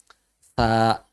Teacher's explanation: Pakai ujung lidah, disentuhkan ke ujung gigi seri atas.